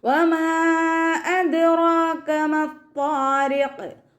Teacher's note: അദ്റാക ദാല് കൽക്കലയുടെ letter ആയതുകൊണ്ട് full സുക്കൂനും കൊടുക്കുക. റോ ഫത്തഹ ആയതുകൊണ്ട് നമ്മൾ ഉയർത്തിയിട്ട് ഉച്ചരിച്ച് കൊടുക്കുക · മീമിൻ്റെ കൂടെ മദ് വന്നു, മദ്ദക്ഷരത്തിന് ശേഷം അടുത്ത വേർഡിലായിട്ട് ഹംസയും വന്നു. മദ് ജായിസ് മുൻഫസിൽ 2-4 ഹർക്കത്ത് നീട്ടിപ്പാരായണം ചെയ്ത് കൊടുക്കുക കേട്ടോ. അദ്റാക ദാല് കൽക്കലയുടെ ലെറ്റർ ആയതുകൊണ്ട് ഫുൾ സുക്കൂനും കൊടുക്കുക.